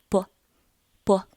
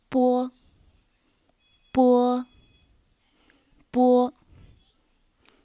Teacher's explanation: 波 is not English B. It should be a lighter one, equals to P in sport.